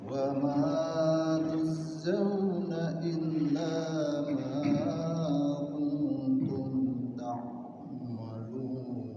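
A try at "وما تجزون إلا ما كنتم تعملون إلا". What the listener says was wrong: Na illa, tuh ada illa. Wa ma tujzauna illa ma kuntum ta'maluna illa. Waqafnya di illa.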